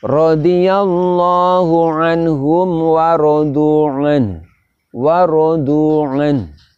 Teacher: Di situ nun sukun walaupun kita baca idhar, namun sifat hunahnya, sifat tawasudnya, sifat berdengung dan sifat mengalirnya nafas tetap kita tampakkan. Kemudian bersamaan dengan itu sifat dari huruf ha diantaranya adalah hamas juga kita tampakkan.